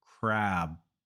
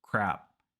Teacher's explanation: when you want to say crab make the vowel longer crab and when you want to say crap make that vowel very short crap it's the same vowel a just the length changes crab crab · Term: length of the vowel